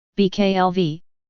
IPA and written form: bɑːklɑvɑː (باقلوا)